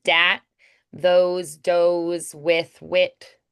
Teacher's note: nasally, it's stretched, it gives a kind of a punchy edge, and it's usually turned into a diphthong. The TH usually becomes a D or a T.